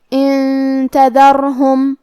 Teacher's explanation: یہاں نون ساکن ہے پھر حرف التا ہے، تا حروف الاخفاء میں سے ہے تو ہم یہ حکم کو غنہ کے ساتھ ادا کریں گے